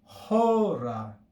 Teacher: the acute accent tells us to raise the pitch on the first syllable